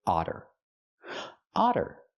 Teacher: We see the double T making the fast D sound because they're between vowels.